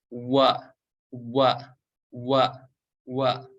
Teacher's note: huruf wawu itu tempat keluar dari asyafatain atau kedua bibir kita. Jadi cara membacanya menempelkan dan memonyongkannya.